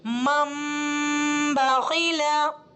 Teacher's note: तनवीन और नून साकिन की आवाज को मीम में कन्वर्ट कर देते हैं तो ऐसा लगता है कि मीम की आवाज आ रही है